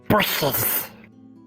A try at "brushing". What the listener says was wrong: No. Brushing. Brushes would be plural. That would mean you have more than one brush.